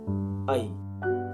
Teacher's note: ऐ वर्णमा नेपाली भाषाका 2 स्वर छन्: अ र इ